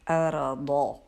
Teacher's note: آپ کی زبان کے جو پچھلے کنارے ہیں نا ان کو اوپر داڑوں کے اندر والی جگہ پہ لگائیے تو یہ ضاد کی آواز بنتی ہے